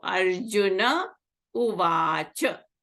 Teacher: Arjunaha Uvacha. Visarga is followed by a vowel, so the Visarga disappears.